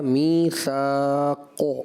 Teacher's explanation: کلکلہ کے ساتھ قاف جو ہے صفت استعلاء میں سے